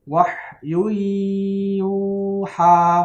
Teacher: Gunahnya berdengungnya selama 2 harokat, ya. Jangan cepat-cepat. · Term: idgham bi gunnah